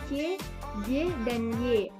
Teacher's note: konsonan yang dihasilkan dengan bagian tengah lidah sebagai artikulator dan langit-langit keras sebagai titik artikulasi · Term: konsonan palatal